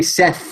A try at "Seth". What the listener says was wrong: Has he got an F? Yeah, you're adding an F.